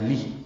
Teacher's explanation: لام زیر لے نہیں، لام زیر لی پڑھنا ہے